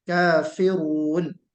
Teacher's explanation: रा को पुर करना है